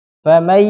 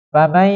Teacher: Apabila ada nun sukun bertemu dengan salah satu dari huruf yanmu, nah, maka dibacanya melebur, dimasukkan ke huruf setelahnya dengan gunnah yang dipanjangkan.